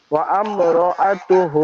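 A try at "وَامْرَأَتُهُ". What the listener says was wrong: আমরা হবে না, ওয়াম রাআতুহু, ওয়াম র, ওয়াও মিম জবর ওয়াম।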